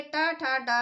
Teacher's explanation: लेकिन जो ये टा ठा डा है, इनका उच्चारण स्थान मूर्धा होता है, इसलिए ये मूर्धन्य ध्वनियाँ होती हैं।